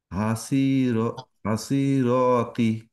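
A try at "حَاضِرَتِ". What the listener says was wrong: এটা তো সদ না, নুক্তা আছে, তাহলে কি হবে?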